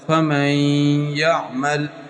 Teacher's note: نون کی اپنی آواز بالکل ختم ہو جائے گی، اسی ادغام کہتے ہیں، اور ساتھ غنہ بھی ہوگا